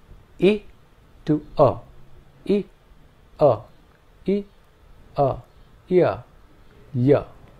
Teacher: the transition from e to a gives us the semi-vowel ya